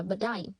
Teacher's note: But nối âm với chữ T nối âm với I, chữ T biến thành đờ nên đọc là but I.